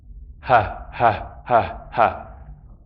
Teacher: What's happening with the the H, is that it's happening right at the level of the vocal cords, right down there, at the bottom of the throat. Ha. The place where that stop comes, it's happening right here.